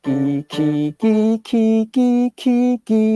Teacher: The rear of the tongue does the GK.